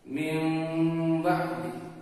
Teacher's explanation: ketika ada nun mati bertemu dengan ba, maka berubahnya menjadi huruf mim. Seakan-akan kita masuk kepada berubah dari nun ke ba itu menjadi mim, tapi memakai dengung.